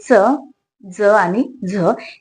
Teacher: ज्याच्यामध्ये दात आणि टाळू या दोन्हीपासूनही त्या वर्णांचा उच्चार होतो बघा दंत तालव्य मध्ये तुमचा दात पण येतो आणि तुमची टाळू